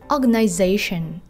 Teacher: trọng âm chính rơi vào âm tiết số 4